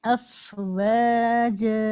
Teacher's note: فا کی ادائیگی میں ایک ایئر فلو باقی رہے، ہونٹوں پر محسوس ہونا چاہیے، تب ادائیگی فا کی مکمل ہوگی.